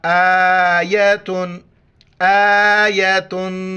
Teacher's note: ناک میں آواز پیدا کرنی ہے آخر میں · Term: تنوین